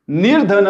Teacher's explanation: त्या विसर्गाचं र होते पुढे चालून